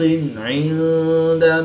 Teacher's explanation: نون ساکن کے بعد دال حروف اخفا میں سے ہے تو یہاں پر اخفا ہوا یعنی غنہ زمانی کر کے پڑھیں گے۔